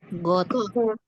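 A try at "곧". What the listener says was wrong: Jadi tidak kita baca God pakai D, tidak ya. God langsung T.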